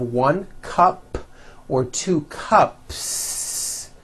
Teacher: Well then if you add an S to the word cup to make it plural, the S you add also remains unvoiced.